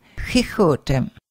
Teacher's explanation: X pronounced as a soft H in the back of your throat